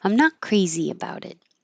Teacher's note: This T changes to a D, about it, and the final T, you just hold